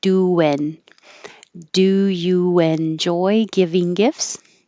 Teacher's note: There's an invisible W there because you round your lips for do, and then enjoy is back.